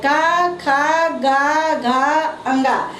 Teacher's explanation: जीभ का पिछला भाग कोमल तालु का स्पर्श करता है। जीभ जो है पिछले तालु को स्पर्श करता है।